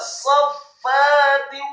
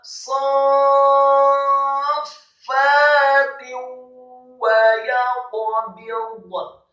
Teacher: Fawqahum saffatin, ingat membacanya, sadnya dibaca tafkhim dengan posisi bibir bawah agak tertutup Dibacanya dengan mat fathah, dengan mat yang sempurna 4 sampai 6 harokat. Setelah selesai baru disambung ke huruf fa yang tasydid.